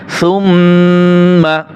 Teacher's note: মিমের উপরে তাশদিদ রয়েছে ওয়াজিব গুণ হবে